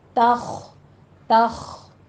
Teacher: خا کو مفخم پڑھیں گے، توخ نہیں کہنا، تا باریک رکھنا ہے، تخ، تخ، خا پہ ہمس ہوگی، ساتھ پر پڑھا جائے گا۔